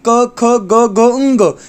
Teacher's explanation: क जो होते हैं वो कंठ वाले होते हैं।